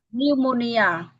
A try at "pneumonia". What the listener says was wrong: Yeah.